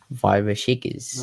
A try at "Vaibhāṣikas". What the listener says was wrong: No, Vaibhāṣikas. See, the A is a long A. Vaibhāṣikas. Yeah, the S with the dot underneath is a sh.